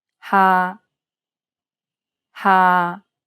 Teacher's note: final tone is a low tone it's pronounced low and steady